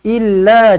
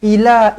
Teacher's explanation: Pastikan huruf lam ini kita baca dengan sabdu. Illa, jangan ila, tak boleh.